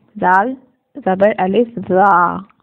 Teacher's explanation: زال کو نرمی سے ادا کریں گے. زال کو 2 حرکت کھینچیں گے کیونکہ اس کے آگے الف ہے